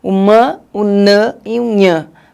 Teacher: tem os nasais, que vai ser pronunciado e o ar vai vir para frente, para o nariz